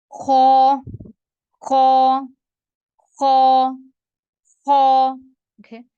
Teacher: नहीं होता और ख के ऊपर एक नुक्ता होता है और ख जो है ये मोटे रूफ में से है इसको भरे हुए मुंह के साथ पढ़ेंगे